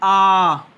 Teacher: दूसरा आता है आपका दीर्घ स्वर। दीर्घ स्वर में 2 मात्रा काल का समय लगेगा, जैसे कि आ।